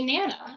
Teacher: in banana, the least stressed syllable in that word is the BA sound. So they just say nana instead of banana.